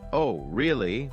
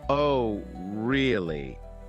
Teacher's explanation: with a high surprised tone, they're genuinely interested or shocked. But if they say, Oh, really? with a flat tone, they might be skeptical or even a bit sarcastic.